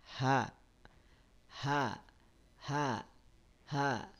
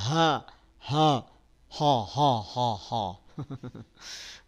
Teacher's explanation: Dari makhraj pun dia berbeda. Yang H, pastikan H itu keluar dari mana? Dari pangkal tenggorokan.